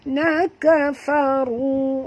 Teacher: ru sini tebal, ra tafkhim